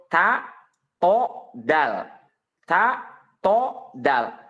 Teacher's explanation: Ta, to, dan dal itu adalah secara makhrajnya dia sama. Keluar dari ujung lidah yang ditempelkan ke pangkal gigi seri atas.